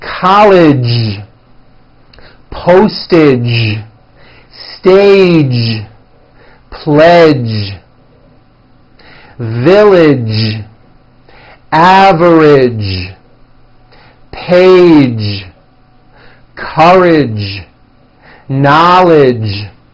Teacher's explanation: the American J sound at the ends of words be sure to keep the voicing going throughout the whole word